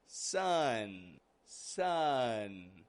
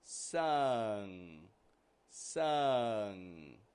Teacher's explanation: the N position where the tongue rises up in the front, and the NG position where the tongue rises in the back. My tongue is moving up in the back and it's touching the soft palate.